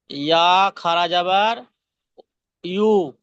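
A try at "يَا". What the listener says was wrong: ইয়া খাড়া যাবার ইয়া। পেশ হলে ইউ হবে পেশ হলে ইউ হবে। ইয়া খাড়া যাবার হলে ইয়া হবে, ইয়া খাড়া যাবার ইয়া।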